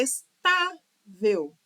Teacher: tá é mais forte, é a penúltima sílaba e não a última. É uma paroxítona terminada com L.